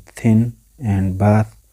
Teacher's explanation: producing dentals we use my tongue tip behind upper teeth